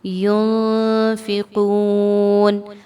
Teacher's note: میم ساکن کے اصولوں میں ہم نے سیکھا ینفقون، نون ساکن کے بعد فا آ رہی ہے، یہاں پر اخفا کرتے ہوئے نون کی آواز کو ناک میں مخفی کر کے یعنی چھپا کے پڑھیں گے، اور ساتھ میں غنہ بھی ہوگا